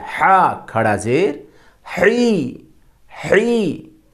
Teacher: ہا گلے کے بیچ سے